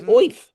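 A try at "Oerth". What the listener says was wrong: It's orth. But they have orth, and I like orth. The E is, you don't hear it. So, orth.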